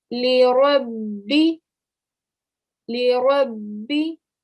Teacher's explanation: the ra is going to join to the ba, but you're going to put pressure on the ba. Why? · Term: mushaddad ba